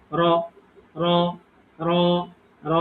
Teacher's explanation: এটা এক আলিফ পরিমাণ টানবো, মানে ২ সেকেন্ড মতো